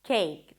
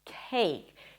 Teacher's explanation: So the first k sound was a regular k, cake. The second one was aspirated, as you should pronounce it in English, cake. So it feels like there is a little H right after the k sound.